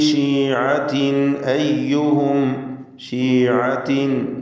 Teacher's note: തൻവീനും ശേഷം ഹംസയുമാണ്. ഇൽഹാർ ഹൽക്കി മണിക്കാതെ വെളിവാക്കുക